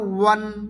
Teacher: 2 ঠোঁট গোল করে খালি অংশ থেকে আদায় হবে, তার মানে খালি জায়গা থেকে, কোথাও বাজবে না।